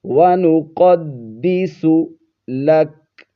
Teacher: ناک میں چھپا کر نہیں پڑھنا ہے آپ نے، بِحَمْدِكَ وَنُقَدِّسُ، قوف کو موٹا پڑھیں گے، دال کو جماؤ کے ساتھ